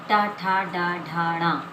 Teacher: ये मूर्धन है, यानी जो है हमारी जीभ से बोला जाता है